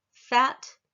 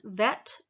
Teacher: i'm putting my uh teeth to my lips for f as in fat and v as in vet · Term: labia dental